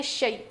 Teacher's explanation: یہ شے مجہول ہوتا ہے، غلط پڑھنے کا طریقہ ہوتا ہے، اصل میں ہے شی